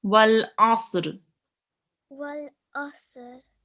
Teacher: make sure to read this ayn from the middle of your throat